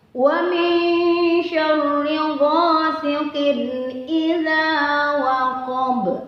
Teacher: Yaitu dibaca samar-samar. Nun matinya itu tidak jelas, tapi dileburkan ke huruf sya. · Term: ikhfa